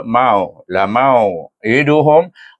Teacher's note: wau huruf mad tetapi dia tidak dibaca dengan mad tak boleh baca dengan mad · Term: bacaan lin